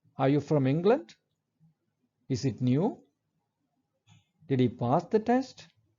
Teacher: all these questions end with a rising tone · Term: rising intonation